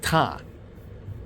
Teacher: Classical Arabic also has unique pronunciations that have not been known in modern Arabic. The ta sound, the aspirated t sound